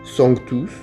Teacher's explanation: Le M et le N s'articulent fortement et ne nasalisent jamais la voyelle précédente.